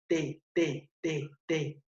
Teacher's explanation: el ápice de la lengua contacta con la cara interna de los incisivos superiores